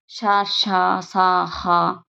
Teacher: ఇవన్నీ మనం ఊష్మాలు, గాలికి బయటకి వదులుతూ పలుకుతాము